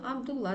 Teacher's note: Мәселен, Абдуллах араб тілінен енген есім, онда соңғы х дауыссызы түсіп қалады, Абдулла түрінде айтылады